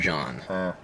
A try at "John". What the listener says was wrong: John? It's John. You're saying Jean like he's a French weirdo.